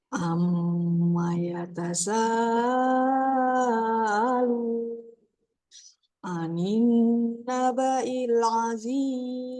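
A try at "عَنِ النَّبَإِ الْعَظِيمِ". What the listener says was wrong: Nah, anin sedikit tekan lagi Bu. Anin, kurang tahan.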